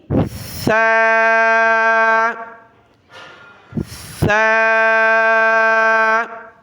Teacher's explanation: زبان کے نوک دانتوں سے باہر نکال کر نرمی کے ساتھ ادا کرنا ہے بغیر سیٹی کی آواز کے